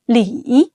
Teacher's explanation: Start low, dip even lower, then rise higher. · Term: third tone